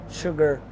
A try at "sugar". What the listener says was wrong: You have to say that R at the end. Sugar.